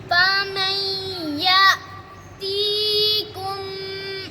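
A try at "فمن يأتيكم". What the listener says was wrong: आपने फमन ये गुन्ना थोड़ा किया, आगे वाला सही किया। कुम इधर भी गुन्ना है ना।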